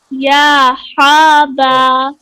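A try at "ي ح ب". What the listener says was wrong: गले से नहीं, ये सीने से।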